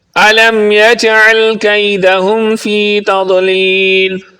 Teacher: یجعل کی جیم پر قلقلہ کریں گے، عین کو درست پڑھیں گے۔ تضلیل کی ضاد پر قلقلہ نہیں کریں گے بلکہ اس کو پر پڑھیں گے، اور اس کو آخر پہ لمبا بھی کریں گے کیونکہ یہاں پر مد عارض ہے۔